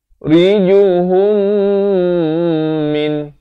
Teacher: mim mati bertemu mim, idgham mislan saghir. Kena dengungkan 2 harakat.